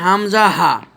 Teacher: কণ্ঠনালীর গোড়া হতে হামজা হা উচ্চারিত হয়